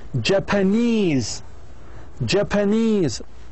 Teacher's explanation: The primary stress is on the first syllable of the suffix. If the stem consists of more than one syllable, then its first syllable will take a secondary stress.